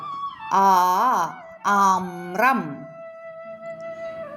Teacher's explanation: ആ എന്നതിന്റെ ഇരട്ടി സമയം നീട്ടി ഉച്ചരിക്കുക